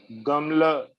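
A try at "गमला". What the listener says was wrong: Very good, very good.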